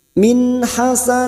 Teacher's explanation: nun sukun dibaca jelas tanpa mendengung